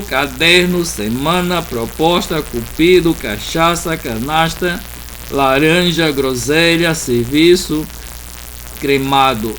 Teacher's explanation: Essas palavras todas, a sílaba forte é a penúltima.